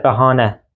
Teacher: bəhanə ikinci hecadadır. A səsi uzanır. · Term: səs uzanması